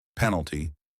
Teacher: Penalty, three syllables. Stress on the first part